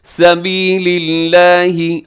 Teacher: سبیل اللہ، لفظ اللہ کو آپ باریک پڑھیے گا، لفظ اللہ میں لام سے پہلے جو ہے وہ زیر ہے، تو اس لیے آپ اس کو باریک رکھیے گا